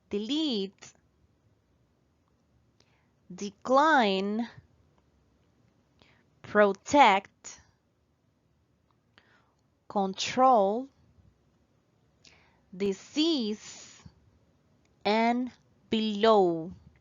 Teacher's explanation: examples of two-syllable words which are stressed on the second one